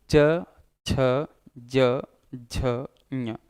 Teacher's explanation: अगर शुद्ध तरीके से बोलने का प्रयास करेंगे तो जीभ ऊपर जाकर के तालू से चिपक रही होगी। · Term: तालव्य व्यंजन